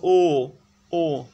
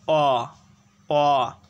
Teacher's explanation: ও এর উচ্চারণকালে ঠোঁট অ অপেক্ষা অধিক সংকুচিত হয়। যেমন তুমি যদি উচ্চারণ করো অ অ, এবার যদি উচ্চারণ করো ও ও, লক্ষ্য করলে দেখবে যে অ এর তুলনায় ও উচ্চারণকালে ঠোঁট বেশি সংকুচিত হচ্ছে। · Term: সংবৃত